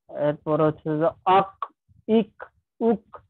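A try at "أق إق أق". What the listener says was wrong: আমাদের কলকলার দ্বিতীয় অংশের আওয়াজটা কিন্তু সবার একটু দুর্বল হয়ে যাচ্ছে, ওইটাকে আমাদের আর একটু জোরালো করে নিতে হবে। আর কি, কলকলার যে উচ্চারণ, সব উচ্চারণ গুলোকেই দ্বিতীয় অংশটাকে আর একটু জোরালো করতে হবে। হইছে যে দ্বিতীয় অংশের আওয়াজটা থাকা, তো দেখা যাচ্ছে দ্বিতীয় অংশের আওয়াজটা থাকে, কিন্তু ওইটা আরেকটু ওর উপস্থিতিটাকে আরেকটু জোরালো করা, এতে কলকলাটা আরো স্পষ্ট হবে।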